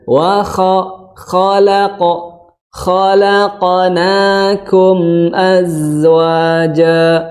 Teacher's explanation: Tadi, ya, yang dibahas sebelumnya, huruf yang tebal, kho, yang bunyinya o, itu tidak dimonyongkan kedua bibirnya, ya. Tapi biasa aja.